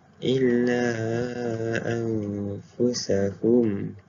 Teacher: ia dibacakan dengan memasukkan huruf nun kepada huruf selepasnya dan didengungkan dengan 2 harakat. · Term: ikhfa' hakiki